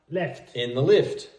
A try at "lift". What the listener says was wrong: Not left.